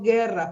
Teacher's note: No es diptongo porque no se pronuncia la u